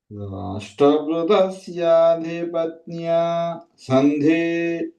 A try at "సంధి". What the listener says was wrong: సంధి ఒత్తు లేదండి. సంధి.